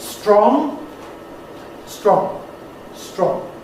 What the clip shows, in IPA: strɒŋ